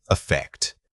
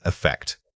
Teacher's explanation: When we talk about an effect, remember that it is a noun, so the stress is on the second syllable. The vowel here is short and clipped, almost like when you say the letter I.